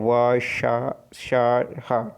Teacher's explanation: इन व्यंजकों के उच्चारण में दो अंग जो है एक दूसरे से इतने निकट आ जाते हैं कि बीच में निकलने वाली वायु के लिए संघर्ष करती हुई निकलती है। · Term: संघर्षी व्यंजन